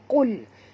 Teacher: Qul huruf qaf tebal. Jangan baca kul ya, tapi qul.